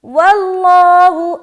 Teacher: آگے واللہ, واو لام زبر ول, لام کھڑا زبر لا, ہا پیش ہو. واللہ, اب لفظ اللہ کا لام کو موٹا رکھیں گے کیونکہ اس سے پہلے کیا ہے, زبر ہے